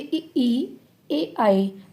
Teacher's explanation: ये जीभ के अग्र भाग को प्रयोग कर रहे हैं ना इन वर्णों को बोलने में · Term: अग्र स्वर